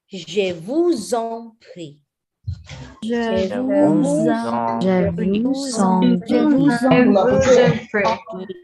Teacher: Make the S sound like a Z. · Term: Liaison